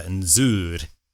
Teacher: for something like sur, it actually becomes a Z sound